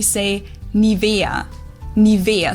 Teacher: in German we say nia nia so the emphasis is on the E